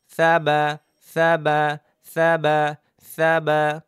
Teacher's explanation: ভেজা ভেজা জায়গা থেকে বা